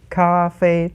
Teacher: Two first tones, okay.